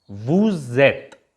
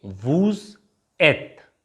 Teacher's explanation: there's a little sound of z comes in between